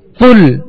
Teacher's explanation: اس کو کل باریک نہیں پڑھیں گے بلکہ پر پڑھیں گے، موٹا پڑھیں گے